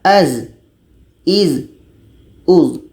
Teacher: Zai ini letaknya pada ujung lidah menempel dengan bagian atas gigi seri bawah